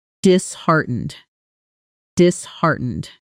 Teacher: We say disheartened with the strongest beat landing right on heart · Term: stress pattern